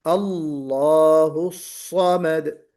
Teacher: سواد نکالنا ہے، سین نہیں نکالنا ہے، اس کو پر پڑھنا ہے، حرف صفیر ہے، سیٹی بجے گی